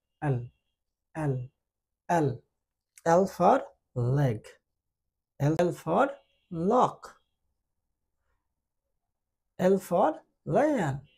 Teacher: জিহ্বার সামনের অংশ উপরের দাঁতের গোড়ালিকে টাচ করে এবং মুখটা একটু খোলা থাকে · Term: এল